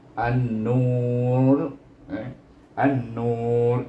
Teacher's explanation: tapi dia kena baca tebal ra-nya, sebab dia mati dengan ra